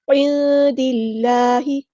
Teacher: نون ساکن کے بعد دال ہے تو یہاں پر اخفا ہوگا، نون کی آواز کو ہم چھپائیں گے اور ایک الف کے برابر رکیں گے بھی